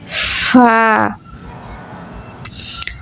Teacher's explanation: নিচে ঠোঁটের পেট সামনের উপরের ২ দাঁতের আগার সঙ্গে লাগাইয়া ফা